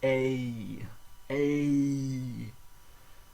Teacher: the final vowel is drawn out into two separate vowel sounds in English a long a sound and an e